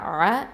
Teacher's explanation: ஐன் ஃபத்தா அ, இது நடுத்தொண்டையிலேருந்து வரணும்